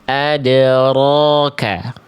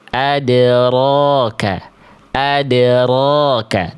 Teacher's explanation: Bergetar tetapi tidak dengan getaran yang berlebihan. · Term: takrir